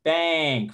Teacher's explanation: That letter, that n sound there is not actually how we pronounce that in this word. In fact, we actually use an ng sound, which is a little bit different. · And we have this good old tilde thing you see there that should be over the E that indicates that that A sound, this is the A sound in the International Phonetic Alphabet. It doesn't just sound like an A, it sounds like an eh.